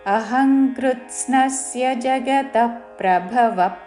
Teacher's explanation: జగతః విసర్గ తర్వాత పక్కన నాలుగవ చరణం మొదటి అక్షరము ప కాబట్టి శ్వాస వదులుతూ ప లాగా ఉచ్చారణ చేస్తూ